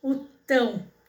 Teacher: Aonde que tá a sílaba mais forte o tão Então ela é uma oxítona